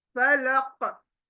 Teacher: यह कलकला का लेटर है कल कला यानी काफ को एकदम सख्ती से हलक में बोलना है।